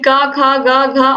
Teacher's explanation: क वर्ग का उच्चारण स्थान कंठ होता है